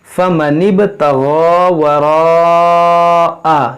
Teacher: फ़मनिब बा में कलगला करेंगे